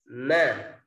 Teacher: Nah, begitu juga dengan huruf mim. Selain di bibir, makhrajnya juga di rongga hidung.